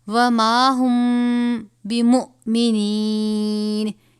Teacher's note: وما ہم، اب یہاں پر آپ دیکھ رہے ہیں میم ساکن کے بعد حرف با آیا ہے، یہاں پر اخفاء شفوی ہو رہا ہے، یعنی غنہ کر کے پڑھیں گے